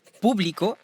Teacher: Publico, avec accentuation sur le U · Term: syllabe tonique